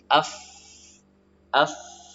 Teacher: huruf fa yang mengalirkan udara melalui celah antara pertemuan bibir bawah dengan gigi seri atas. Af, maka keluarlah udara dari situ. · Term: hamas